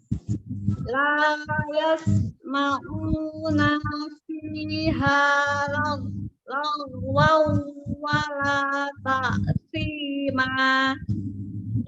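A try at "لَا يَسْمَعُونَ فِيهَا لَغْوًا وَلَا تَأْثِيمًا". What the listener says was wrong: Ya, nanya jangan diayun. Nah, dia akan panjang kalau diayun ya, pemisahan. Nanya pendek langsung. La yasma'una fiha. Langsung ya. Langsung nyambung.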